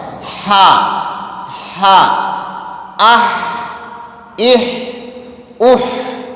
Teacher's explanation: یہ جو ہا ادا ہوتا ہے وہ حلق کے بیچ والے حصے سے ادا ہوتا ہے۔ ہا، ہا، اہ، اہ، اہ، یعنی آواز جاری رہنی چاہیے۔